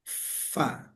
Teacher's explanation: bibir bawah bagian dalam, di bibir bagian dalamnya itu ketemu dengan gigi seri, gigi yang depan sini, tapi gigi seri bagian atas